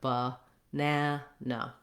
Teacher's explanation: we have a schwa in the first and the last syllable. So it sounds like ba-na-na.